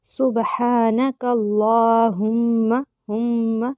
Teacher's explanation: میم پہ غنہ کریں گے، اس کے بعد میم کو لمبا نہیں کرنا کیونکہ صرف زبر ہے